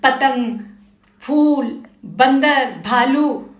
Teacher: प वर्ग के अक्षर ओष्ठ ओष्ठ मतलब होठ से बोलते हैं। पतंग फूल बंदर भालू और देखो ये होठ से टच हो के हवा बाहर आ रही है।